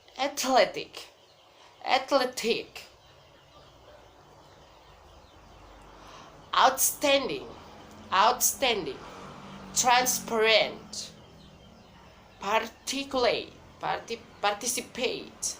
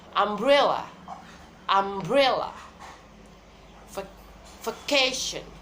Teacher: Secondary stress in the first syllable and the primary stress in the second syllable, and the other syllables is unstressed.